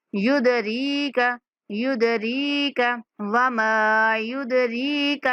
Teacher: را کے بعد یا مدہ ہے تو را کو کھینچ کے پڑھیں گے